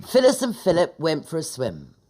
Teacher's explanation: our short I sound is beginning to sound like a short U